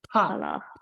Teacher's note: This second pa is Mahaprana.